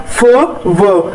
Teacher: जब हम फ व वाली साउंड प्रोड्यूस कर रहे हैं तो हमारे जो होंठ है, नीचे वाला होंठ है, ये ऊपर वाले दांतों के साथ मिल जाता है